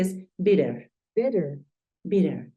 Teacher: Es usual que cuando tú ves palabras que tengan doble T, es usual que esa T, esa doble T, se convierta en un sonido de R, en una R.